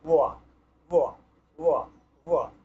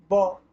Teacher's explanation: তো এর জন্য ব্যাকরণ শাস্ত্রে এই বয়ের উচ্চারণ বিষয়ে বলা হয়েছে, এই বয়ের উচ্চারণ দাঁত এবং ঠোঁটের মধ্যবর্তী স্থান থেকে হয়। দেখুন প ফ ব, এটা তো ওষ্ঠ স্থান থেকে ব এভাবে বলা হতো, কিন্তু এই বয়ের উচ্চারণ দাঁত এবং ঠোঁটের মধ্যবর্তী স্থান থেকে করতে হবে।